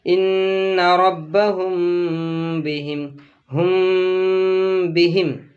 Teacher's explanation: میم ساکن کے بعد او آ جائے یا را آ جائے یا دوسرا کوئی حرف آ جائے تو وہاں پر غنہ نہیں ہوگا۔ میم ساکن کے بعد با آئے تو یہاں پر اخفاء ہوگا، غنہ کے ساتھ ہوگا۔ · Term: اخفاء شفوی